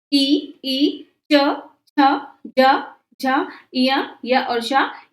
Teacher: तालू से इ ई च छ ज झ य य और श ये तालव्य वर्ण